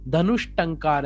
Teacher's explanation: अब ट है वो क्या है, वर्ग का प्रथम वर्ण है, इसलिए यहां पे क्या हो जाएगा, विसर्ग की जगह श, मूर्धन्य श हो जाएगा। तो क्या बनेगा, धनुष टंकार है बन जाएगा।